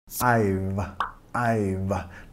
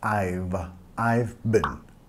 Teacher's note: I've. Nota acá, tienes que pegar los dientes hacia arriba, labio debajo